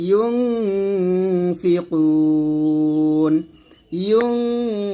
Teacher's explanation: কুতে আমরা তিন আলিফ টান দিয়ে নুনটাকে সাকিন করবো